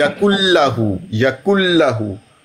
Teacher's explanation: नून की आवाज बिल्कुल नहीं आएगी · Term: इदगाम